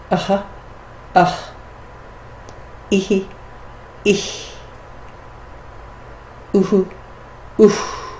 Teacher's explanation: In the modern language, in India, you'll hear the Visarga as almost an echo of the vowel before it.